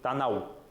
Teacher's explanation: Там на конце звук «в», который обозначается буквой «у».